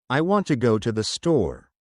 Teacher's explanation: In this sentence, want and store are stressed. The other words are said quickly and softly.